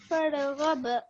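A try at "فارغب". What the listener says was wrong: What I heard now is you gave the ra a slight jerk as well. I know the ra has a sukun on top of it, but is it part of the 5 calcula letters? No.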